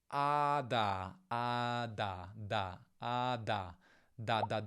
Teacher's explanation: nota il punto dove la punta della lingua tocca il palato, appunto gli alveoli dietro i denti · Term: il suono della D